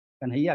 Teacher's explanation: ना और हा के योग से जो संयुक्ताक्षर बना उसके आग्रह से पूर्ववर्ती का गुरु नहीं हुआ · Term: पारंपरिक उच्चारण